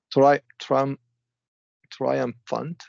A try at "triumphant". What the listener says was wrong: that was good. But you want to emphasize the second syllable, triumphant.